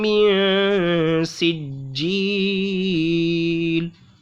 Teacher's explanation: हुरूफ मद्दा के बाद लाम जो है वो वफ की वजह से यहाँ साकिन हो रहा है, तो मद्दे आरिश का कायदा होगा, इसलिए इसको खींच के पढ़ेंगे